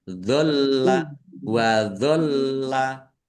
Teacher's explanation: Kemudian bainakum wa dholla, mim sukun bertemu dengan huruf wawu, bacaan idhar safawi, kemudian lam dibaca jelas, kemudian lamnya dibaca double, ada tasdidnya, ditekan dan ditahan biar tampak double